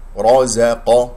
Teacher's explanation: الراء مفخمة مفتوحة والقاف مفخمة مرتبة ثانية